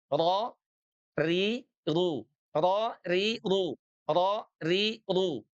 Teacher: Ro itu dari ujung lidah kita paling depan bagian langit-langitnya ya. · Huruf ro itu ujung lidahnya nempel dengan langit-langit. Ro langit-langit bagian depan sebelum ke gusi.